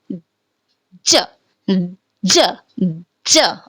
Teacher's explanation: तो जब हम ज बोल रहे हैं तो हमारा जो टंग है वो हमारे टिथ के बीच में आता है, और हमारा जो साउंड होता है जिसमें हमारे चिक्स के जो मसल होते हैं वो स्ट्रेस्ड होते हैं.